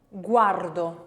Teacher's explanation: the letter U when it's in a weak position, and we have bilabial, W, W, W. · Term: glide